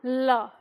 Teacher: जीभ का अगला भाग मसूड़े पर टिकता है और हवा जीभ के दोनों ओर से बाहर निकलती है, तब हम बोलते हैं ल।